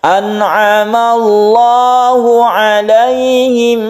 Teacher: Nah, yang ini lafadz Allah sama yang tadi itu lafadz Allah tarqiq, yang ini tafkhim atau tebal. Karena sebelumnya ada fathah, maka lam jalalah di sini dibaca tebal atau tafkhim.